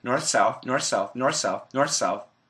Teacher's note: if there's an S next to a TH sound, if we say it fast, the TH can disappear